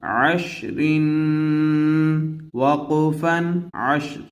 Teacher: را پر 2 زیر ہے اس لیے اس را کو باریک پڑھیں گے